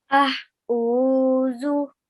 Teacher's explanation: Ain comes from middle of the throat. Okay, and it has a more prominent sound.